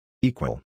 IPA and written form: ˈiːkwəl (equal)